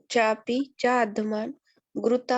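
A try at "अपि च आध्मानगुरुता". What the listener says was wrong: चापी नहीं है, वो अ है, वो अ है, अपी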